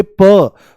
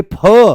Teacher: इनके बारे में बोला जाता है महाप्राण पेट से बोले जाते हैं। तो जैसे ही आप बोलोगे प तो प आराम से बोला जाएगा और जैसे ही बोलोगे फ तो फ एकदम से कहां से आएगा? पेट से आएगा। ज्यादा दम लगाना पड़ेगा।